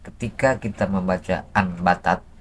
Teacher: Hukumnya iklab, ditukarkanlah nun itu ke mim dalam segi suaranya, tetap dalam tulisannya ya, batat gitu.